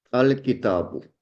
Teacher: So the tanween of the last letter is dropped and there is a single vowel.